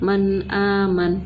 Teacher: صرف نون کی آواز نکالی ہم نے, کوئی غنہ نہیں کیا. قاعدہ ہم نون ساکن کے بعد حمزہ تھی اس لیے ہم نے اس کو کیا نام دیا, قاعدے کا اظہار حلقی. · صرف نون کا اظہار کیا ہم نے